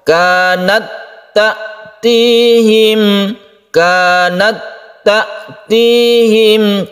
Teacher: langsung ke tasydid ta tanpa kita hembuskan nafas seperti kita membaca kanat, hamasnya itu. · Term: idgham mutamatsilain